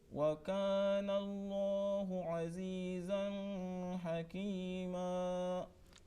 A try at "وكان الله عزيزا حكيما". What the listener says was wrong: Okay, the first bit was okay after some time, and here again there is a mistake. za, azizan. That za is a tanween followed by ha. You see, after noon sakin or tanween there are 6 letters, and ha is one of them where it will not be prolonged, the voice.